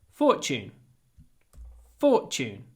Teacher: Try to pronounce the T like ch.